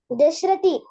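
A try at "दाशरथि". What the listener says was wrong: Dasharathi. That is not Dasharathi. The longer A. Dasharathi.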